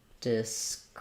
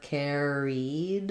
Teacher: So described, we have second syllable stress.